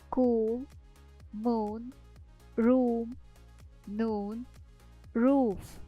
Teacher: буквосполучення подвійна о читають як довгий звук у